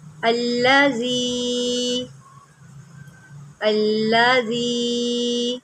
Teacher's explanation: زال ہے، اس کو زی نہیں پڑھنا